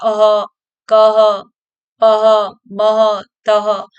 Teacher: कंठ से निकल रही है ध्वनि हमारे कंठ से आ रही है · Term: कंठी वर्ण